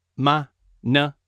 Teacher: So those 2 words have no tone and they're just pronounced lightly.